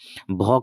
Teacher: भ का उच्चारण स्थान है ओष्ठ।